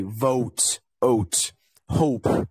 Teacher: a lot of words we say o as two vowels two sounds so one is like oh and the other one is ooh · So a lot of words, we say O as two vowels, two sounds. So one is like O and the other one is U. This is called a diphthong. It's a completely different sound because there's two sounds at the same time. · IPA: /oʊ/